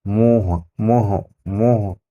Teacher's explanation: आवाज मुंह से भी और नाक से दोनों से आ रही है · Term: अनुनासिक